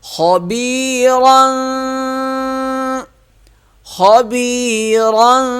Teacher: را موٹا ہوگا، خا بھی موٹا ہوگا، یا مدہ ہے، اسے ایک الف کے برابر کھینچ کر پڑھیں گے۔